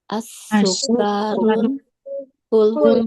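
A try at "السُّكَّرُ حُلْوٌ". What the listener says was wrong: As-sukkaru ya. Bukan as-sukkarun. As-sukkaru. Hulwun.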